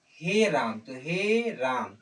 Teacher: पल स्वर जो है जिसके उच्चारण में तीन मात्रा का समय लगता है